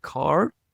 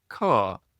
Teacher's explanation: Is it car, as it is for a lot of Americans and Canadians, or is it car, a single vowel, as it is for me?